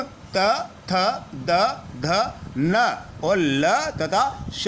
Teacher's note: इनके उच्चारण में हमारी जीवा दांतों को स्पर्श करती है। दंत से उच्चारित होने वाले वर्णों में त वर्ग संपूर्ण त, थ, द, ध, न और ल तथा श का उच्चारण स्थान दंत है। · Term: दंत्य